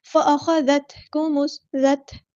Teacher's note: ذال کو باریک ادا کریں گے، نرمی سے ادا کریں گے، تا ساکن کی آواز میں ہلانا نہیں ہے